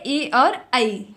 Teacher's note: जब आप ए बोलेंगे तो आधी ध्वनि आपकी कंठ से निकलेगी, जबकि आपकी जिह्वा जो है वह तालु को स्पर्श करेगी। तो कंठ और तालु को मिलाकर के जो ध्वनि निकलती है वह होती है आपकी ए और ऐ। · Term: कंठ तालु